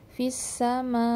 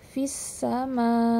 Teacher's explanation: Ada Hamzah Di Akhir Yang saat kita wakafkan harus tetap kita baca jelas itu Hamzah jangan dibaca fissama mana hamzahnya yang di akhir sedangkan Hamzah itu